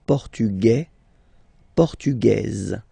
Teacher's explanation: The only difference between the two, as usually when we'll have some, nationalities ending with AES, like that, and then the feminine form, es, okay, it will be only in this z sound, the difference between the masculine form and the feminine form